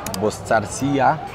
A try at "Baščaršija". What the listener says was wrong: wydaje mi się, że to wszystkie te S i C na górze takim daszkiem czyta się szyczy. Boszczar... Boszczarsija.